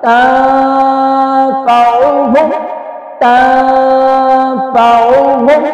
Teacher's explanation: یعنی ناک میں آواز کو چھپا دینا، زبان کو اپنی جگہ پہ رہنے دینا، اوپر نہیں لگنے دینا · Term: اخفاء